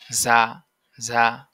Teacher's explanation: সামনের নিচের দাঁতের আগা হতে শীর্ষসহ পাতলা ভাবে আদায় হবে যা ঝা এই ঝা টা অনেকটা ঝার মতন শোনা যাবে ঝার